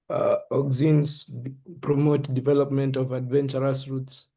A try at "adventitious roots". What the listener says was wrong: Yes, adventitious roots, not adventurous roots.